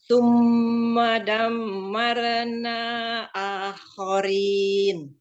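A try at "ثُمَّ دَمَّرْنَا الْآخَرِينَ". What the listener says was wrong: Mim yang pertama, tasdidnya sudah diberikan gunnahnya. Yang kedua, harus disamakan dengan mim yang pertama.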